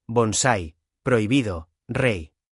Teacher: Dos. Una vocal abierta y una vocal cerrada. Vocal abierta más vocal cerrada. La abierta suena más fuerte. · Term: diptongo